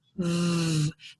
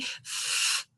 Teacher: The difference is I have that vibration with VV that I don't have with F.